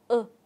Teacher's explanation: trong quá trình phát âm chúng ta chú ý là miệng của chúng ta hơi tròn một chút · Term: nguyên âm ngắn